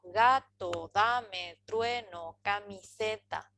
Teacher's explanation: Las sílabas tónicas están en negrita y las átonas no están en negrita. Entonces, ga, da, true, se son las tónicas.